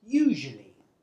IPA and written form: ˈjuːʒuəli (usually)